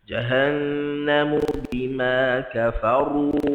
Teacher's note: Huruf ra dia mesti ada getaran ru.